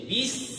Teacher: সফির মানে হচ্ছে একটা ক্ষিপ্র আওয়াজ, ধারালো আওয়াজ। · পাশাপাশি সিনে রফাওয়া আছে, আওয়াজ জারি, হামস আছে, বাতাস জারি।